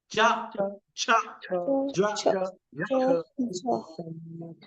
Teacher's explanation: पीछे वाले तालू पे जीभ लग रही है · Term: तालू से